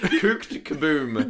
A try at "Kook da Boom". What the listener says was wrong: Kook da Boom. It's not Kooked da Boom, it's just Kook da Boom.